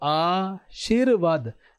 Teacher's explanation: इसमें र का उच्चारण कैसे हो रहा है? शी के बाद में हो रहा है।